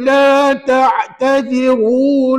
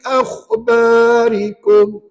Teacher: Kalau ta'tadhiru, ra-nya tebal, kaedah 1. Kalau akhbarikum, ra nipis.